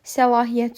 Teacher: Səlahiyyət sözündə isə ə və i saitləri incə, a saiti isə qalın saitdir. Buna görə də bu variantlarda ahəng qanunu gözlənilməyib.